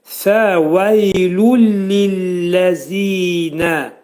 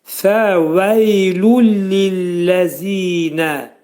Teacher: Baxın, buradakı tənvindəki nun səsi ləmə çevrilir. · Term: idğam bilağunnə